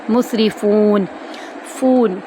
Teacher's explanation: واو مدہ کو ہم نون کے ساتھ آیت کا اینڈ کریں گے ایک الف کے برابر لمبا کرتے ہوئے